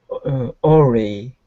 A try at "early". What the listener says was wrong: No, pronounce that R instead of oli. Push your lips outward. Early.